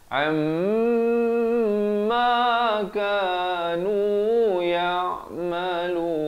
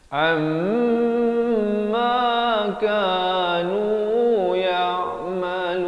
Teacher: Wajibul gunnah, wajib dengung kadar panjang dua harakat.